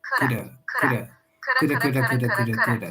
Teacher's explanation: Notice that the D is really, really light. It sounds like a flap T, like a ra, like an R in Spanish.